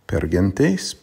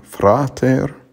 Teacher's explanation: the r is trilled in pergantes because the r is before a consonant and also in frater because it's after a consonant but when